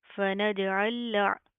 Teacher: लाम साकिन और लाम मुशद्दद, तो एक लाम स्किप होएगी और एक लाम पढ़ी जाएगी। इस लाम को हम पढ़ेंगे, ये लाम स्किप होएगी, ठीक है।